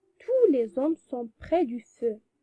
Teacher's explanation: on prononce tout sans prononcer S